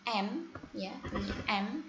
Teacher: M tempatnya di bilabial, kemudian tapi caranya adalah nasal.